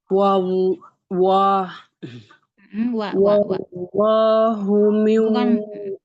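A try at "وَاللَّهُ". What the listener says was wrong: Bukan wo. Wa. Wallahu. Oke, wallahu lam ditekan aja. Beda kalau lam yang tipis ya, nggak perlu ditekan. Kalau ini benar ditekan.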